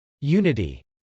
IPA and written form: jˈunəti (unity)